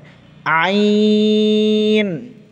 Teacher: হলকের মাঝখান থেকে আইন উচ্চারিত হয়